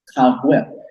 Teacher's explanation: Kagwit. And that's you basically close your throat off to cut the sound off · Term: glottal stop